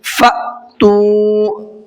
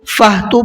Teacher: اس چیز کا بھی خیال رکھنا ہے کہ یہ اس میں ہا کی آواز نہ آ جائے، فہ تو نہ ہو جائے۔ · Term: حمزہ ساکنہ